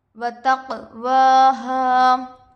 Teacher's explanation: تا پر زبر کی حرکت ہے، جلد پڑھے۔ قاف پر جزم ہے، قلقلہ ہوگا۔ کھڑا زبر برابر ہوتا ہے الف مدہ کے، الف سے پہلے زبر ہے، الف مدہ ہوگا۔